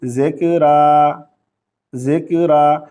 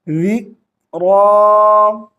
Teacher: ज़ाल को ज़ा नहीं पढ़ेंगे, کاف کے اوپر قلقلہ نہیں کریں گے، را کو باریک آواز سے نہیں پڑھیں گے، را کو موٹی آواز سے پڑھیں گے، ذال کو زا نہیں پڑھیں گے۔